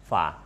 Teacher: makhraj fa itu ada di bibir bagian bawah dalam ketemu dengan gigi atas. Dengan gigi atas itu kemudian bunyinya fa, keluar anginnya, disebut dengan hams ya.